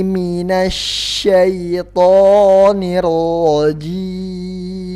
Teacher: shin mempunyai sifat tafashi, artinya anginnya harus mencar